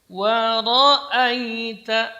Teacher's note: wa tipis, kemudian ra-nya tebal. dan a tipis lagi.